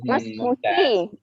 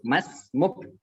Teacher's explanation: Mas Muki kalau kita lengkap baca harokat terakhirnya. Tapi kalau kita sukun cukup Mas Muk.